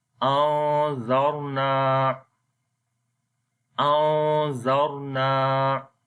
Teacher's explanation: حمزہ نون زبر ان، ذال را زبر ذر، انذر، نون الف زبر نا، انذرنا، انذرنا۔ نون کے اوپر اخفا کریں گے، را کو موٹا پڑھیں گے